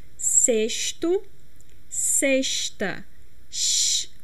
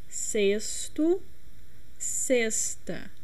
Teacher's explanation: with a strong X, sh. But some regions of Brazil pronounce it in a more soft way, like sexto, sexta, like an S instead of X. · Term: carioca accent